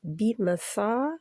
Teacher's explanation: یعنی کہ بالکل گم کے طرف نہیں، اوپر، سا بِمَصَابِیحَ، بِمَصَا 2 کاؤنٹ لمبا کرنا ہے، 2 حرکات، کیونکہ الف مد ہے